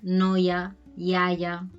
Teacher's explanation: cuando lo tenemos entre dos vocales o incluso cuando la tenemos al principio de palabra, no se acaba de pronunciar como una I, sino que vendría a ser como una especie de Y